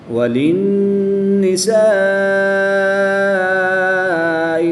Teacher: الف سے پہلے حرف پر زبر ہے تو الف مدہ کے بعد حمزہ اسی کلمے میں ہے تو مد متصل ہوگی. 3 سے 5 الف تک کھینچ کر پڑھ دیں